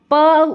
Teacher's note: प अगर आप प उच्चारण करेंगे तो आप देखेंगे कि दोनों होंठ आपके मिल रहे हैं